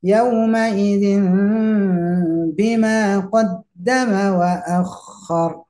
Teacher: Jadi tidak saja yauma idzin bi, zimbi, tidak saja zimbi bibir rapat, tapi juga harus ditahan di sana, ada kandungan gunahnya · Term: iklab